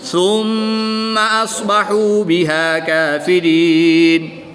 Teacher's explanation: میم مشدد ہے اور میم مشدد میں ہمیشہ غنہ ہوتا ہے، تو یہاں پر ہم غنہ آنی کر کے پڑھیں گے.